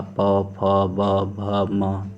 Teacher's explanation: हमारा जो दोनों ओठ है वो एक दूसरे से स्पर्श कर रहा है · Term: ओष्ठ व्यंजन